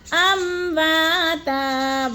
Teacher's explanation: وا میں الف مد ہے، ایک الف 2 حرکات کے برابر لمبا کر کے پڑھنا ہے